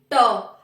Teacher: अब देखो ट को बोलो, मूर्धा से आवाज आएगी ट, यानी कि जीभ मूर्धा पे, ऊपर वाला जो हमारा मूर्धा है ना उस पे लगेगी जीभ।